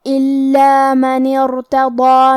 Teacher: کلمت الا میں حرف اللام پہ تشدید ہے تو ہم 2 حرف کے برابر لام کو پڑھیں گے کیونکہ تشدید کی اصلیت 2 حرف ہے.